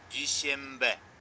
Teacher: Звук N превращается в M. Дүйсенбі. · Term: законом ассимиляции